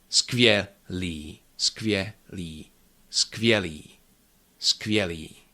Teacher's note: And the rest of the word, li, skvělý, skvělý, skvělý, skvělý. So all the consonants are there, skvělý, but they are not long, they are clear and quick.